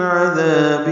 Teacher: عذاب میں عین وسط حلق سے ادا ہوگا. دال نرمی سے ادا کریں گے.